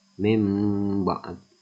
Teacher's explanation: merubah suara nun sukun atau tanwin dengan huruf mim karena berhadapan dengan huruf satu yaitu ba disertai dengan berdengung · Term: iklab